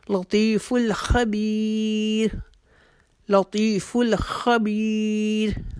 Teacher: را کو ہم باریک کر کے اپنی آواز کو ختم کریں گے, کیونکہ را کے پیچھے یا ساکنہ جو ہے اس کے پیچھے جو بار ہے اس کے نیچے زیر ہے, اور ہم نے اس قواعد کے مطابق اپنی را کو باریک کر کے اپنی آواز کو ختم کرنا ہے. · لطی کو ایک الف کے جتنا کھینچیں گے